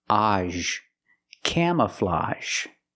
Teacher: And we have this word, camouflage. Again, the AGE makes the open sound ah plus the zh sound.